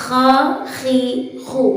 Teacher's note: di sini adalah ketika telah dikeluarkan melalui tenggorokan bagian atas atau ujung tenggorokan, maka yang perlu dilalui di situ adalah mengeluarkan suara dengan beriringan nafas yang sedikit keruh atau nafas yang tidak benar-benar jernih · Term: huruf kha